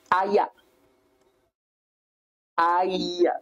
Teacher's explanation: ayah is gliding using the E sound